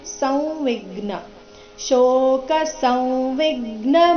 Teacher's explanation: ಸಂವಿಜ್ಞ ಸ ನಂತರ ಇರೋ ಅನುಸ್ವಾರದ ಉಚ್ಚಾರಣೆ ಅನುನಾಸಿಕ ವ ತರ ಬರಬೇಕು